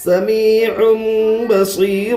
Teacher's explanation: تنوین کے بعد با ہے, اس لیے تنوین کو میم سے بدل کر گنہ اور اخفا کے ساتھ پڑھیں گے. اس کو اقلاب کہتے ہیں. · یا مدہ کو ایک الف کے برابر کھینچ کر پڑھے